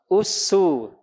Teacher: Jangan naik pangkal lidahnya. Itu sinnya udah naik pangkal lidahnya. Datar, istifal.